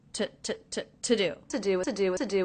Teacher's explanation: I notice with the word to, I am reducing that to the schwa sound. It's not to do, it's to do.